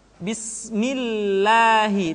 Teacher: kalau lafaz Allah didahului oleh huruf yang berharakat kasrah maka lam kembali dibaca dengan tipis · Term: tarkik